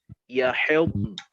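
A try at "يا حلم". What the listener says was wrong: Nah, nunnya mana? Nunnya hilang tuh. Ya hilm. Non itu nanti sifatnya dia bainiyah. Dia sifat bainiyah. Kayak lam, kayak ain ya. Jadi dia mesti jelas. Ya hilm. Ya hilm. Ya hilm. Ya hilm.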